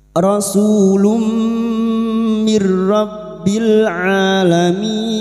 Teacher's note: Masuk dengan mendengung. Masuk pada huruf mim dan mendengung selama tiga harakat. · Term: idgam bigh bunah